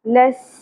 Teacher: سین سیٹی کے ساتھ زبر کو زیادہ نہیں کھینچنا.